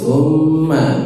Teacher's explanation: Summa, mimnya ditasydid, didengungkan.